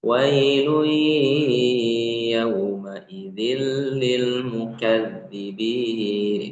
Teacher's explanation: dibaca ada dengungnya ya. Baca ada dengungnya. dan dengungnya itu ditahan dua harakat kurang lebih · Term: idgam